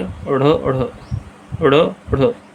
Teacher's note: ठीक है, जीव पहले ऊपर उठता है, मूर्धा का स्पर्श करेगा, फिर झटके से नीचे आ जाता है, तो हम द्विगुण व्यंजन कहते हैं।